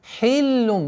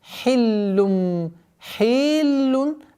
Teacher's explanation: Так как лям удвоенный звук, нужно обращать внимание, чтобы огласовка касра не уходила в удлинительный звук.